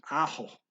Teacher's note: notice the guy pronounces a K as an H here in ako. So he's not saying ako, he's saying aho.